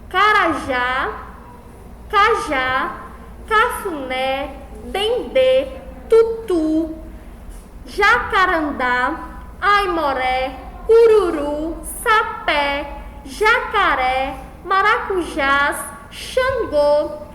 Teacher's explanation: a sílaba mais forte é sempre a última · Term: palavras oxítonas